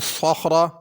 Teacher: صخرہ میں تینوں حروف پر ہوں گے، صاد بھی پر، خا بھی پر، را بھی پر۔ صاد کو سین نہیں پڑھنا، صخرہ را باریک کر کے نہیں پڑھنی۔